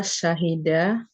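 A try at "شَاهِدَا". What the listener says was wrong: Kalau huma, syahidanya panjang. Syahidah.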